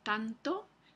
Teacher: la n puede tomar el punto de articulación de una consonante dental e por ejemplo tanto Entonces esta n es dental y aquí